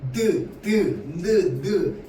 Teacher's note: 혀 끝이 위에 잇몸이랑 붙었다가 떨어진다고. 얘는 둘 잇몸 소리죠.